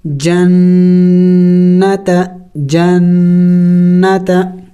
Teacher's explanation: गुन्ना कहते हैं नाक में आवाज़ पैदा करना, नाक में आवाज़ लेके जाना